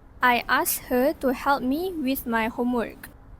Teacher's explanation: the word ask here is an elision because the sound k in ask is elided. Consonant clusters like sk are often simplified, especially before another consonant.